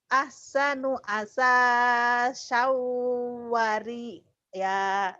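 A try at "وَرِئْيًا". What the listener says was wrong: Kurang neken. Wari ya. Ntar jadi wari ya, jadi bencong. Wari ya.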